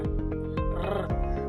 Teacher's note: Ang hangin ay ilang ulit na hinaharang at pinababayaang lumabas sa pamamagitan ng ilang beses na pagbalag ng dulong na kaarkong dila. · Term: Pakatal